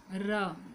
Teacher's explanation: उच्चारण में जीभ तालू से लुढ़क कर स्पर्श करती है। लुंठित क्यों है, जब इसका उच्चारण करते हैं ना तो जीभ तालू से लुढ़क कर स्पर्श करती है।